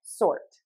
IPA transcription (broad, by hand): sɔrt